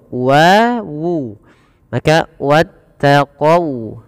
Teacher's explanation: jangan dibaca wattaqau dengan o, tapi dia dengan u ya, karena dia sifat waw.